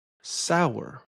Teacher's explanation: sour as two syllables, which makes you want to give a strong stress to the sa part.